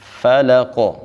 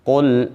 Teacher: قاف موٹے حروف میں سے ہے، ہم اس کو موٹا بھی پڑھیں گے اور قاف میں قلقلہ بھی کریں گے، کیونکہ یہ حروف قلقلہ میں سے بھی ہے۔